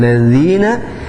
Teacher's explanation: ladzina zi-nya dibaca dua harakat karena termasuk hukumnya adalah mad tabi'i